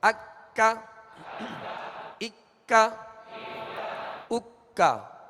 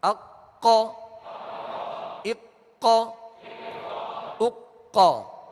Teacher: یہ ڈنڈی والا کاف ہے لہذا اس کو باریک پڑھنا ہے، اور دو نقطے والے قاف کو پر یعنی موٹا پڑھنا ہے.